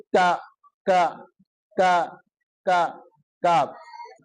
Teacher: یہ تالو کے سخت حصے سے ادا ہوگا، یعنی منہ کے طرف تھوڑا آگے ہو کر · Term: کاف